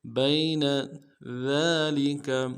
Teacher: ذال کو باریک کریں گے، کھڑا زبر کو ایک الف دال میں کھینچیں گے، لام کو نون سے ادا کرنا ہے، کاف کو بھی نون سے ادا کریں گے۔